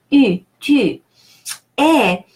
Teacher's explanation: U is pronounced keeping the lips as if you wanted to say U, and inside of the mouth you're saying the sound E.